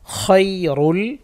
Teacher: খ মোটা হবে বাতাস থাকবে